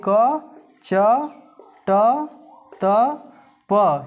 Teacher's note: ये जो 5 वर्ग हैं यह स्पर्श व्यंजन है और इनका उच्चारण स्थान क्रमशः कंठ, तालु, मूर्धा, दंत और ओष्ठ क्रमशः है।